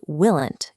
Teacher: But English doesn't work that way because of how we physically produce sound. To make the L in will and the N in not, your tongue hits the same spot, the alveolar ridge behind your teeth. Trying to say willant causes your tongue to jam against that ridge, making the word difficult to pronounce clearly.